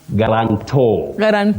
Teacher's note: The stress is towards the end, and you don't say ta.